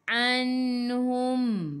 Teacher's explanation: Berhenti dengan mim, matikan mim, tutup mulut.